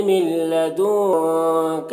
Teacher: نون کو لام سے ملا کر بغیر غنہ کے پڑھیں گے. اس کو ادغام تام کہتے ہیں.